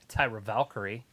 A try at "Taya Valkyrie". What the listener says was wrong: I think it's just Taya, not Tyra. Taya. Taya. Taya Valkyrie.